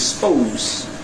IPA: aɪ ˈspəʊz